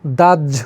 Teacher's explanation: কিন্তু উচ্চারণের সময় সে কিন্তু এই হ এবং জ উচ্চারিত হবে না। হ এর সঙ্গে জ ফলা থাকলে উচ্চারণটা একটু অন্যরকম হয়ে যায়। উচ্চারণ হবে জ এবং ঝ। জ এবং ঝ উচ্চারিত হয়ে যাবে।